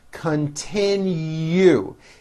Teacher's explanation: last syllable has a hidden y